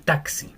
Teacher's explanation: X es como una K y una S